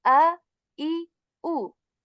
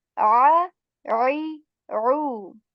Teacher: This sound of Hamza is articulated from the lower portion of our throat, and this Ayn comes from the middle portion of our throat.